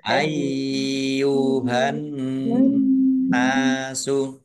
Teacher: Nun tasdid dibaca gunnah atau mendengung. Ya, ditahan biar tampak dengungannya.